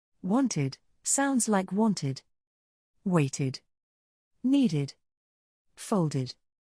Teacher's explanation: If the last letter of the word is spelled with d or t, the ed is pronounced as a separate syllable with an id sound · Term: the ID sound